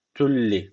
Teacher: gunnesiz şekilde bağlıyoruz yani şu leyi şeddeli gibi okuyoruz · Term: idgamı bila gunne